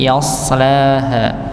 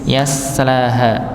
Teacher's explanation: Pada huruf sin dan sha. Bedanya huruf sha dibaca tebal, sedangkan sin dibaca tipis.